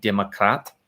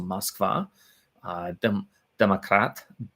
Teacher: in Russian, the unaccented O is pronounced like an A